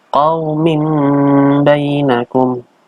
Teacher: ada tanwin bertemu dengan ba. Itu namanya iklab. Mengganti tanwin menjadi mim.